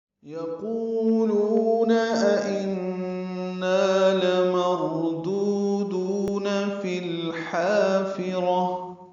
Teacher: یقولون قاف پر ہے، قو واو مدہ ہے، لو واو مدہ ہے. أئنا دو حمزہ ہیں، دوسرے حمزہ کو بھی تسہیل پڑھنا ہے، نون مشدد پہ غنہ ہے اور نا الف مدہ ہے، دو حرکات لمبا ہے.